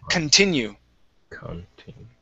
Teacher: the stress is not at the beginning, so I pronounce the C-O-N as kun